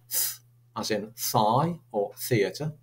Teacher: We then have these, which are quite unusual, really, because there's lots of languages in the world that don't have these. These are called dental fricatives.